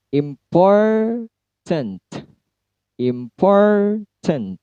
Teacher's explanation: Pour-nya yang tinggi, im-nya rendah, pour-nya tinggi